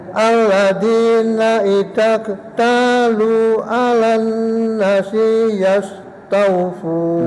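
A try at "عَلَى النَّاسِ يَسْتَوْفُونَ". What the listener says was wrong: Nanya panjang. Alan nasi yastawfun. I-nya kurang tekan. Kebanyakan nggih I-nya, A-nya nggih.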